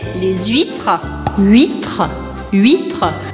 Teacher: eu faço a liaison, ou seja, que eu grudo a palavra les com a palavra huîtres, porque uma termina com uma consoante e a próxima começa com H.